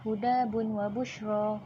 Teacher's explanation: huruf da yang mempunyai baris tanwin 2 di atas bertemu dengan huruf waw yang tidak bersabdu akan dibaca dengung dan 2 harakat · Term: idgham nakis